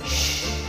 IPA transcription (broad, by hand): ʃ